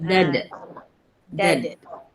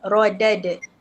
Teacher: Dia sughra, qalqalah. dia kena lantunan kecil.